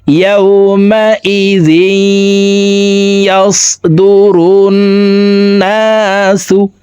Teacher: তাসদিদ ওয়ালা ইয়ার সাথে গুন্নার সহিত মিলাইয়া পড়তে হবে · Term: ইদগামে বাগুন্না